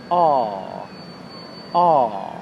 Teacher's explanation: For the ah sound, my jaw is back. The ah sound comes from the back of my mouth. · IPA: /a:/